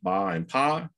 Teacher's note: you start with a nice voicing contrast in the first stage